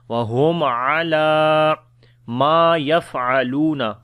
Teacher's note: Lam we long due to standing fatha on it.